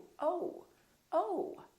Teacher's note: So it's actually two sounds, it's O and U together. So you have to move your mouth from O to U